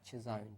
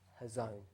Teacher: most of the time we pronounce it with a CH, a ch sound, but I think in the original it's actually a h. It's a silent C, and I think it's hazon is the actual original way to pronounce this word.